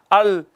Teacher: طرف زبان جب ثنایا، ربائی، انیاب اور دواحق سے لگے تو لام ادا ہوتا ہے